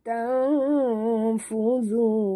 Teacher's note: nun mati bertemu ta, kita sorok dan dengung ikhfa hakiki, dengung dua harakat.